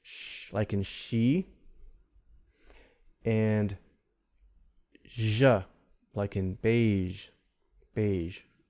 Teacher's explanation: your tongue is curled up and it's pointing kind of toward the palatal area, or somewhere between the alveolar and palatal area. Shh, and it's creating friction. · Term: Palatal sounds